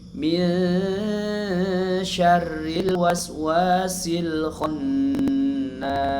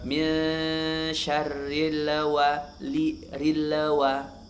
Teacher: huruf lam ini termasuk huruf yang tawasud, ya, maka dia mengalir sedikit